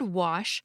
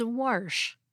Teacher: some speakers of American English pronounce the word wash as warsh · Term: intrusive R